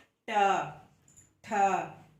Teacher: जब हम इन वर्णों का उच्चारण करते हैं तब हमारी जिह्वा पलट जाती है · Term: मूर्धा